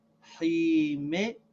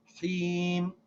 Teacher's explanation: We don't pronounce the kasra, we just pronounce the sound of the meme as if it has a sakin.